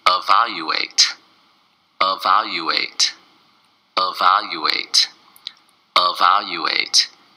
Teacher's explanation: its four syllables and the stress is on the second syllable of wow you ate oh wow you ate evaluate now sometimes